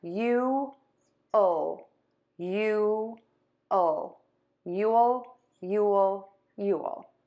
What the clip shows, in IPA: ju-əl